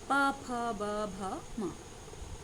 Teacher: ओष्ठ वर्ड वे वर्ड होते हैं जिनका उच्चारण दोनों होठों यानी ओष्ठ के मेल से होता है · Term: ओष्ठ व्यंजन